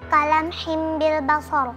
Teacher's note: Yang kedua, iqlab pada kata kalam himbil basar karena ada kasrah tanwin bertemu dengan huruf ba dibaca melebur ke huruf mim